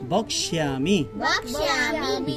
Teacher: ক্ষীয় থাকলে ক যোগ মূর্ধন্য ষ, যার কারণে প্রথমে কর উচ্চারণ হবে, তারপর মূর্ধন্য ষ।